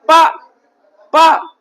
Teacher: तो जैसे हम प बोल रहे हैं तो हमारे दोनों जो होठ हैं आपस में क्या हो रहे हैं? स्पर्श हो रहे हैं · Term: स्पर्श व्यंजन वर्ण